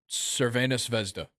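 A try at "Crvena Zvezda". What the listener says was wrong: no, you don't pronounce the Z in the second name, so it's Cervena Vezda. Cervena Vezda.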